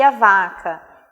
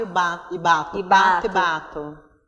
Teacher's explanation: o único traço que diferencia esses dois sons é a sonoridade, né? O surdo e o sonoro